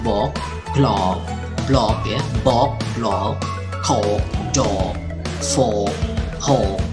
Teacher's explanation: Terasa lebih panjang daripada yang lain ini karena dia ditutup oleh huruf konsonan yang voiced, ya. Huruf konsonan yang voiced atau yang bergetar pita suara adalah contohnya adalah konsonan gah, ya, gah, kemudian dah, gah, dah, dan juga bah.